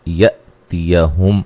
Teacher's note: حمزہ کو جھٹکے سے ادا کیا جائے گا